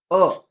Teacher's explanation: अ जीभ थोडीशी पाठीमागे येते अ तुम्ही पण एकदा ट्राय करून बघा अ म्हणलं तर पुढे · मध्य स्वर जैसे बघा, इस स्वर के उच्चारण में जीवा मुंह के मध्य भाग में रहती है